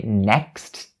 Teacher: Another point that I want to talk about for the word next is the k sound in the middle of the word next. When you say next, the k sound is actually being stopped within your throat. So actually you don't have to say next, because it's gonna take you a lot of time and effort to say it, and it sounds really weird to the ear of native speakers.